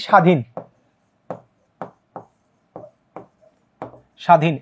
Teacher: ব ফালাও যদি শব্দের শুরুতে থাকে সেটার উচ্চারণ কিন্তু হয় না